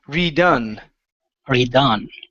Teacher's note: the word is pronounced redone the stress is on the end